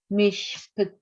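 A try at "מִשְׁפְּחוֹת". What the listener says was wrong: Close. There's no toe here. It looks like a chuppah. Mishpechot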